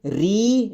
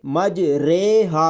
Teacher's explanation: سورہ ہود کی آیت نمبر 41 میں یہ را، اس را کو را امالہ کہتے ہیں۔ اس را کو معروف کے بجائے مجہول طریقے سے پڑھا جاتا ہے۔